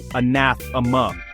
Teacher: Stress on second syllable.